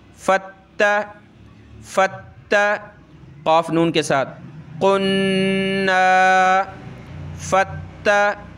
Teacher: नून के ऊपर ये तशदीद है तो गुन्ना होगा, फ़ा ता के साथ मिलेगा।